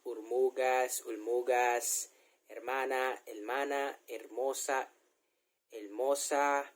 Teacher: we pronounce r to l like ur mugas hermana el mana hermosa el mosa a senor